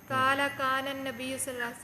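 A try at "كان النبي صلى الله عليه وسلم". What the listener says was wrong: तू काला क्यों पढ़नी है? काला काला ना पढ़। काला वो कहते हैं कानन नबी सल्लल्लाहु अलैहि वसल्लम, थे नबी सल्लल्लाहु अलैहि वसल्लम,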